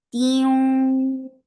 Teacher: Tiung, idgham, and this is idgham with gunna. Keep the sound in your nose for a longer time.